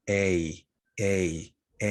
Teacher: a okay which is a diphthong the combination of two vowels and it is tense a a a you can feel it in your cheeks